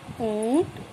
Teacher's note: चंद्रबिंदु का उच्चारण होता है हमारा मुंह और नाक दोनों से लिया जाता है दोनों की सहायता से इस हम उपचारित करते